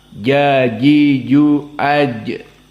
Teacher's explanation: makhraj jim min wastil lisan ma'al hanak al-a'la jajiju aj, dan juga jim dari huruf yang mana dia itu lawan dari al-hams, maka dia adalah harf yang jahr. · sifatnya adalah jahr wa syiddah, dan sifat yang tidak ada lawan adalah qalqalah